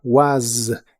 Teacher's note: Was termina con el sonido vibrante de la s.